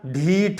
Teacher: ऐसे ही घृष्ट को हमने कर दिया ढीठ, तो महाप्राण हो गया। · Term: महाप्राणीकरण